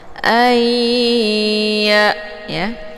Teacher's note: Nah, untuk nun ini tidak lagi dibaca tapi langsung dileburkan ke dalam huruf ya sambil ditahan sehingga terbentuk suara yang mendengung lebih kurang 2 harokat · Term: berdengung